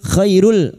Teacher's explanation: fathah bertemu ya sukun. Kita lunakan huruf lin